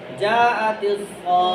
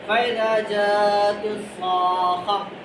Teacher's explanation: صاد کے بعد جب خا کو ملائیں گے تو خا پہ تھوڑی دیر رکیں گے ، جی ٹھیک ہے، جاءت الصاخہ، یہ جو خا پہ تھوڑی